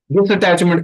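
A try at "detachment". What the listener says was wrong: डिटैचमेंट, डिस नहीं,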